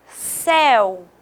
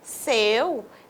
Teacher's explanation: Céu é um timbre aberto. Se fosse seu, seria um timbre fechado. Então, o céu, indicado aqui pelo acento agudo.